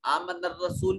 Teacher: आमन रसूल में रा मुतहर्रक है, इसको मुफख्खम अदा किया जाएगा। रसूल में वाव साकिन माक़बल मज़मूम वाव मद्दा है।